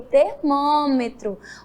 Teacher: Termina com O, mas a pronúncia, a oralidade, o som é U no final.